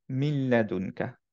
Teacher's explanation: মিনের নুনটার পরে যেহেতু লাম ছিল এজন্য এখন মার্জ হয়ে গেল নুনটা লামের সাথে এজন্য আমরা পড়বো মিল্লাদুনকা এখন মিন পড়বো না বিকজ মার্জ হয়ে